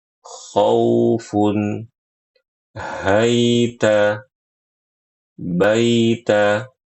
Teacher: pada kata khaufun yang memanjang itu bukan khonnya tapi wau sukunnya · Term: sifat lin